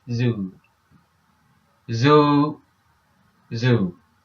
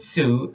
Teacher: you should feel the vibration inside your throat when pronouncing the Zed when you what you're feeling what you feel is the vibration